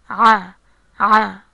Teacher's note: The sound of Ayn comes from the Adam's apple